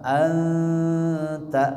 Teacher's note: Karena huruf ikhfanya huruf tipis, bukan huruf tebal, suara dengungnya juga ditipiskan.